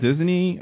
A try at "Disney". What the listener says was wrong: Did you say Disney with like 3 syllables? I think you said